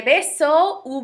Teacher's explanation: what you're going to notice on the sound for V is that it sounds just like the letter B does